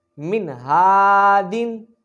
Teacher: ہم یہاں غنہ نہیں کریں گے کیونکہ نون ساکن کے بعد حروف ہلکی میں سے ہا آ رہا ہے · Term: اظہار